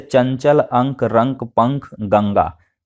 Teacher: जब वर्णों का उच्चारण केवल नासिका यानी कि नाक के माध्यम से होता है तब इसे अनुस्वार कहते हैं